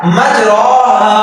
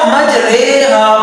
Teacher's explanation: زبر کو زیر کی طرف یا الف کو یا کی طرف مائل کر کے یا جھکا کر پڑھنا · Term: امالہ